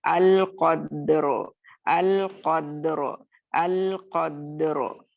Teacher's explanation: दाल को कलकला करना है और फिर रॉ को मोटा लेकर आना है